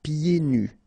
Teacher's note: so you don't hear the D.